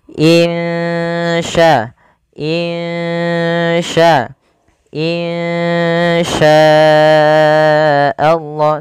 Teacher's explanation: Cara membacanya, samarkan suara nunnya kepada huruf sya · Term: ikhfa hakiki